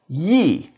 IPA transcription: ji